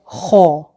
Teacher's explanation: हलक से निकलता है और हलक के सबसे ऊपर वाले हिस्से से निकलता है, सबसे ऊपर वाला हिस्सा जो बिल्कुल गले के साथ लगता है। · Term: मोटा हर्फ